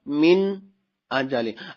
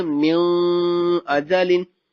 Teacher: نون ساکن ہے، اس کے بعد حمزہ، تو نون ساکن کے بعد حروف ہلکی آ رہا ہے، لہٰذا یہاں پر اظہار ہوگا